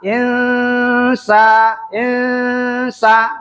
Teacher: Antara nun dengan sin bunyi bacaannya samar. Insa insa nunnya yang disamarkan.